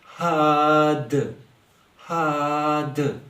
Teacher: زیر کی تنوین کو ہم مکمل ختم کر رہے ہیں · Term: تنوین کو ختم